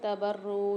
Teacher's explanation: یہاں پر نون ساکن کے بعد تا آ رہی ہے، غنہ کر کے پڑھیں گے